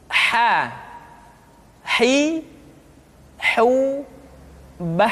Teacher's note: huruf h dikeluarkan dari tengah-tengah tenggorokan di tengah-tengah tenggorokan hi ha hi how mbah hai kesalahan yang